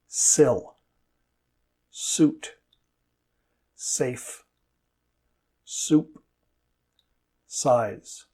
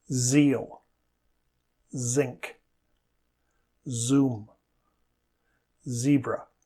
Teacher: S is voiceless and Z is voiced. The sides of the tongue touch the insides of the teeth on the sides of the mouth. The sound is made when air is forced through the small gap between the teeth and the tongue.